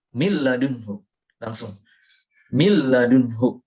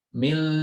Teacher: nun sukun atau tanwin dimasukkan menjadi satu dengan huruf lam atau ra tanpa mendengung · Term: idgham bila gunnah